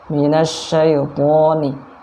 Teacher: huruf to tebal, ujung lidah ketemu gusi kita yang atas.